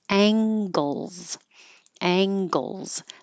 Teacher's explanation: time now this NG really is the NG combination Ang so the back of the tongue goes high and touches the back of the mouth